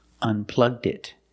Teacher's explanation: If you use a pronoun it together, he unplugged it. Link the D with the next word it.